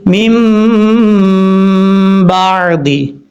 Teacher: نون ساکن یا تنوین کے بعد اگر حرف با آ جائے تو اقلاب ہوگا، یعنی نون ساکن اور تنوین کو میم سے بدل کر اخفا کریں گے۔ اخفا کا مطلب غنہ ہوتا ہے، یعنی غنہ کریں گے